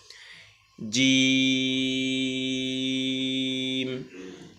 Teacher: জিম শেষে মিমের মত থেমে যাবে দুই ঠোট বন্ধ হয়ে যাবে